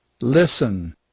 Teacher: é o caso do Listen por exemplo onde a gente não diz o t